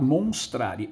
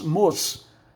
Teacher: E houve a queda do E final. A queda do E final recebe o nome de apócope